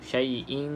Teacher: Kemudian kita nampak dekat sini kan, yang tidak selari selepasnya bukan lam ataupun ra, maka kita baca dengan dengung. Dengung itu dengan cara ikhfa lah. Kita tak jelaskan bunyi nun tu. Syai'in, dia bunyi sama-sama sahaja.